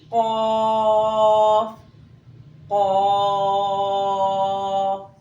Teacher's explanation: ज़बान की जड़ ऊपर तालु से लग के क़ाफ की अदायगी होगी।